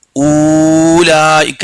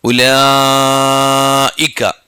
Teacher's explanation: ഇതിലെ വാവ് ഉച്ചരിക്കാൻ പാടില്ല